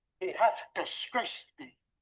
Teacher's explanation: a pitch movement that is known as a fall, we make a statement